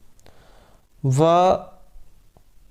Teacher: वकारस्य दंतोष्टम, व इसका जो उच्चारण स्थान है दंत दांत और होठ इनसे होता है।